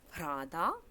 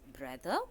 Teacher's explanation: the aspirated voiced stops becomes unaspirated voiced stops